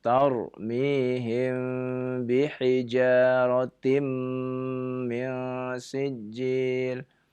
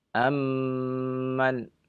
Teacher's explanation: Antara kedua bibir, ya, itu tidak terlalu, ya, kita menekannya. Berbeda dengan ketika mim bertemu dengan mim, ya. Maka ketika mim bertemu dengan mim kita menekannya